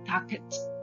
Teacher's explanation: because the stress is on the first syllable. So, the last letter T should not double the letter when adding ed or ing.